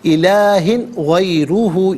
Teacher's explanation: غیرہ میں را پر پیش، را کو پر کر کے پڑھیں گے۔ الہ غیرہ، یہاں وقف کریں گے تو غیرہ پڑھیں گے۔